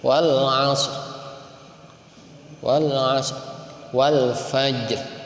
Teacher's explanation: Ar-Raum itu membaca huruf disukunkan. Wal Asri asalnya disukunkan setengah harokat. Setengah harokat itu minimal terdengar oleh telinga kita sendiri.